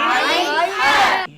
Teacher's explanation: কণ্ঠনালীর মধ্যখান থেকে হলকের মধ্যখান থেকে দুটি হরফ উচ্চারিত হয় আইন হা